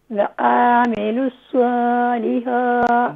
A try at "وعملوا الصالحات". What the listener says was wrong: دیکھیں واو کے بعد عین ہے اور عین پر زبر یعنی فتحہ کی علامت موجود ہے، اسے کھینچیں گے نہیں، اسے شارٹ کریں.